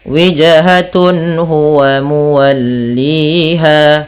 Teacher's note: apabila ada nun sukun atau an, in, un bertemu dengan huruf halqi yaitu huruf tenggorokan, salah satunya huruf ha, maka dia harus dibaca dengan jelas suara tanwin atau nunnya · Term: izhar halqi